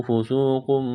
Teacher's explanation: سین میں سیٹی کی آواز پیدا کریں گے، باریک کرنا ہے سین کو